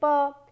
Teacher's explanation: In the case of consonants, we can actually block the air and create different variations in the consonant sound. So, if we block it with our two lips, we can produce sounds like pa